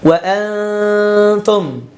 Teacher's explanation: Wa antum, tidak dibaca wa antum la ya. Dan dengungnya itu tipis ya, dengungnya tipis. Wa antum, nggak boleh dibaca seperti ini.